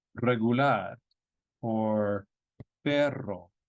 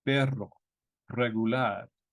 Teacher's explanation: When the R begins a word, or when you have a double R, because in Spanish you will have two R's together on occasion. So at the beginning of a word or a double R, it's a trilled sound.